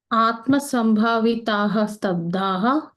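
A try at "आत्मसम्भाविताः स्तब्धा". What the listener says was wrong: So there is no visarga at the end. So stabdha.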